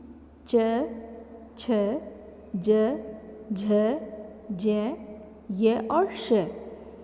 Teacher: इन सभी में तालू का प्रयोग होता है तो यह तालव्य के नाम से जाने जाते हैं